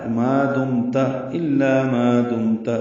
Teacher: میم ساکن پہ اظہار ہے، اظہار شفوی، تا پر زبر معروف طریقے سے پڑھیں گے جلدی.